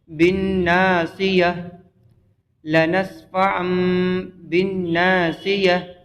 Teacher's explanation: گول تا کو وقف کرنے میں ہا ساکین سے بدلتے ہیں